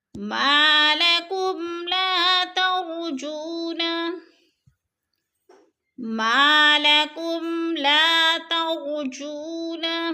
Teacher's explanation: ما کی الف کو کھینچ کر پڑھیں گے، الف مدہ ہے، لا کو بھی تھوڑا سا کھینچنا ہے، الف مدہ ہے۔ تر کی را کو پر پڑھیں گے، جو کو تھوڑا سا کھینچیں گے، وہ مدہ ہے۔